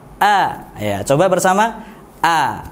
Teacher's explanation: Hamzah di mana makhrajnya? Hamzah makhrajnya, tempat keluarnya ialah dari halqu. Al-halqu, tenggorokan bagian bawah.